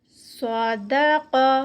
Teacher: اور قاف پہ اینڈ پہ آواز پلٹے گی اسٹاپ پہ تو قلقلہ ہوگا.